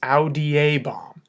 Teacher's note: pay attention to that long e that's worked its way into the fourth conjugation imperfect ending · There's a long E that has slipped in there, so it's audiebam.